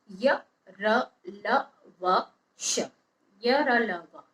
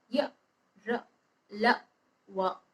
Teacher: य र ल व, ये जो 4 वर्ण होते हैं इनका उच्चारण में सांस में रुकावट कम होती है तथा उच्चारण करते समय जीभ, तालु, दांत, होंठ निकट आते हैं, इसलिए इन्हें हम अंतस्थ व्यंजन बोलते हैं।